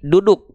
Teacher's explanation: Kalau saya pribadi biasanya melafalkan D alfabet itu begini. Ujung lidah ke langit-langit, bukan ke pangkal gigi seri atas.